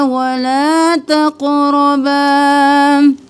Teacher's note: لا ایک الف کے برابر کھینچیں گے، تق، قوف موٹا، تقربا نہیں کریں گے، تق اور را दोनों मोटे कौफ और रॉ, और बा को एक अलिफ के बराबर खींचेंगे, अलिफ मद्दा है।